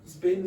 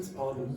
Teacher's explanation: when you say spin, your tongue is more forward in your mouth. And when you say spun, your tongue is more back.